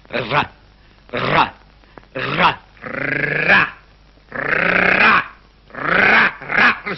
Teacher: Oh. L'air, en portant le bout de la langue jusqu'au haut du palais, de sorte qu'étant frôlée par l'air qui sort avec force, elle lui cède et revient toujours au même endroit, faisant une manière de tremblement